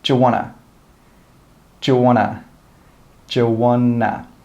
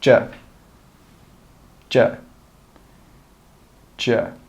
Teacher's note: We don't say 'do you.' We put those together and we just say one sound.